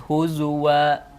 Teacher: tapi kalau kita membaca riwayat hafz maka harus dibaca wau huzua